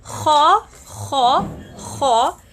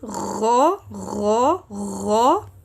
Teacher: Kha is above the Ghain articulation point. Okay, so Kha, Kha, Kha is superior than the region of Ghain.